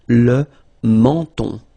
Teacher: So you get two nasal. The first one here, en, and then the second one here, on.